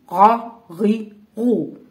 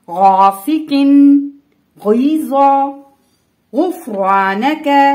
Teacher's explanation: ان کو ادا کرتے وقت زبان کی جڑ اوپر کو اٹھتی ہے اور نرم تالو سے لگتی ہے، تبھی یہ دونوں حروف ادا ہوتے ہیں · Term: غائن